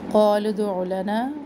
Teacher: लाम पेश को हम दाल साकिन से मिलाएंगे और दाल पर क़लक़ला करेंगे